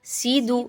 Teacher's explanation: سین اور دال کی حرکات کو آپ نے مجہول نہیں کرنا، یفسیدو لمبا نہیں کرنا بالکل بھی، ایک ان کو اتنا ہی پڑھنا ہے جتنی ان کی حرکات اوپر موجود ہیں۔